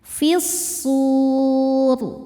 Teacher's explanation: Selanjutnya alif lamnya namanya alif lam syamsiyah karena alif lam bertemu huruf syamsiyah yaitu shad. Cara bacanya dileburkan atau dimasukkan fisur. Saat berhenti di sur hukumnya adalah mad arid lukun.